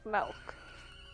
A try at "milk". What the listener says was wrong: you said it was like an e milk